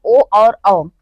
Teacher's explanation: और इसके आगे हम देखते हैं कंठोष्ठ यानी कंठ प्लस ओष्ठ से मिलकर उच्चारित होने वाले जो हमारे दो वर्ड हैं वो हैं ओ और औ। ये हमारे कंठ और ओष्ठ से दोनों से मिलकर उच्चारित होते हैं।